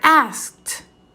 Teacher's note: At the end of that word, you hear the t sound, even though it's spelled as ed.